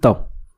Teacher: त को बोलने में हमारी जीव जो होती है वो दांतों को स्पर्श करती है